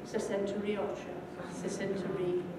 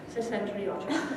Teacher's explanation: Sesenta, that's probably an anglicized pronunciation of it. Now, if you say sesenta, with a schwa at the end, This is a perfect environment in which to insert an R before a following vowel sound. So instead of having sesentaiocho, you end up with sesentariocho, sesentari.